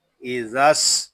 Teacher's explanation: حمزہ زیر ای، ذال سین زبر رس، ازس، یہاں دونوں الف اور لام جو ہے یہ نہیں پڑھے جا رہے، ہم ذال کو سین کے ساتھ ملا کر پڑھیں گے